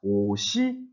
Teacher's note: 형식 형태소가 오는 경우에는 시옷을 올려 붙여서 이어서 발음하라라고 하는 것이 연음 법칙